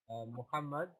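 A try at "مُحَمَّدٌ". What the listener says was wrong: I want you to read the signs at the end, because what we said was the most important sound in these words is the end sign, the sound which comes at the end. So in that case, you're going to say Muhammadun, Khalidun.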